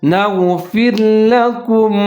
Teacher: غین جو ہے اس کو آپ نے موٹا کر کے پڑھنا ہے اور نون کے ساتھ ملا کے پڑھنا ہے